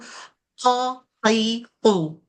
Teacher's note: Bila lidah yang paling pangkal kena dengan langit-langit, bunyi dia jadi macam huruf Q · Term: qaf